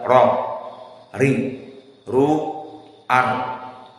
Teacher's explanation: Maka ra indal Arab tidak bergetar seperti bahasa Indonesia r. tetapi di sini hanya satu pukulan